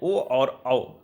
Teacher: ओ और औ, ये दो वर्ण इनका उच्चारण स्थान कंठोष्ठ होता है, कंठोष्ठ।